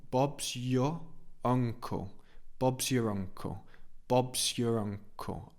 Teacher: So Bob's your. We don't really pronounce the R of your.